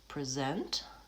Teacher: First syllable is, the vowel is changed to vowel I, reduced